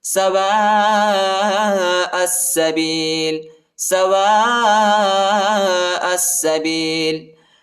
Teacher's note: جو الف اس کے اوپر جو ہے بڑا مد، اس کو تقریباً 3-4 سیکنڈ تک کھینچیں گے اور حمزہ کو سین کے ساتھ ملائیں گے.